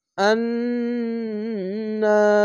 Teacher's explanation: এখানে ওয়াজিব গুন্না তার জন্য ওয়াজিব গুন্না করে এবং এক আলিফ টেনে পড়বেন।